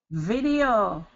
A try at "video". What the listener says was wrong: Perfect. Yep, that's it. So it's that short I and long E, video.